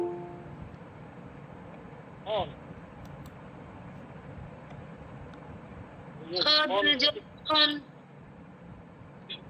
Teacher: এরপরে হরফ হা এটা কন্ঠনার মধ্যখান থেকে উচ্চারণ করবেন বাতাস বের হবে এবং বাতাস বের হওয়ার সময় বাতাসের শব্দ হবে হা দুই জবর হান হা দুই জবর হান এরপরে হরফ খ এটা মোটা হরফ খ এটা কন্ঠনালীর একেবারে শেষ ভাগ থেকে উচ্চারিত হবে এবং মোটা করে পড়বেন।